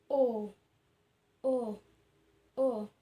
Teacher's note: posisi lidah kita mundur ke belakang, bentuk mulut bundar, serta strukturnya semi terbuka